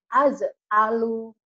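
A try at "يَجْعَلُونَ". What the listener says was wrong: Ibu ini lucu. Masa ya dibaca A ya. Yaj alu.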